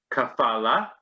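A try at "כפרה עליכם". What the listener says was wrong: Kapara with an R. Kapara.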